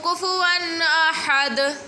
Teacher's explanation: This ha pronunciation is bottom part of throat